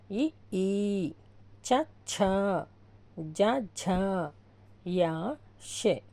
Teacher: తాలవ్యములు అంటే దవడల నుండి పుట్టినవి